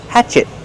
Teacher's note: Use a stop T. Stop the air. Hatchet. Not hatchet, but hatchet.